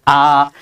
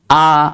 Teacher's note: ঠোটের উন্মুক্তি এই বিবৃত ধ্বনির মধ্যে সর্বোচ্চ পরিমাণ হবে।